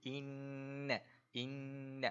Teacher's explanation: Pada huruf nun sabdu ini, wajibul gunnah. Kita wajib dengung dua harakat.